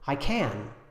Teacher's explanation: when can is at the end we do use the strong form